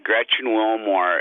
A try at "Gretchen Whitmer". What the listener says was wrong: Whitmer. Gretchen Whitmer. There is no Wilmer.